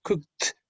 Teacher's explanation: Cook. Sonido K. No vibra. Pasa al aire, obvio, pero no vibra. Entonces, su ED sería cooked.